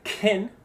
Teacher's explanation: So if you say kin, you'll have that puff of air probably. But if you use the alophone of the c sound that we use in skin, you won't feel a puff.